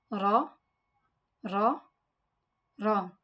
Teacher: Makhraj of Ra is touch the tip of the tongue to the upper gums above the roots of the teeth.